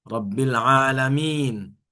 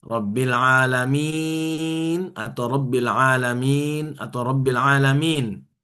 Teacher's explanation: Ini bisa dibaca 2, 4, 6 harokat. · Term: mad far'i